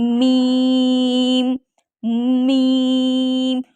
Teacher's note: होठों की बैरून तरी से ठीक है बैरून यानी कि बाहर की तरफ मीम लगता है · دیکھیں میم ادا کرتے وقت جو دونوں ہونٹوں کی تری ہے نا اس سے دونوں ہو رہے ہیں، ٹھیک ہے، ٹچ، دونوں ہونٹ آپس میں ٹچ ہو رہے ہیں لیکن تری سے